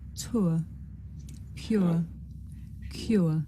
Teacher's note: This is a diphthong, a double vowel sound. The shape the mouth makes changes from the beginning of the sound to the end. It's pronounced ur.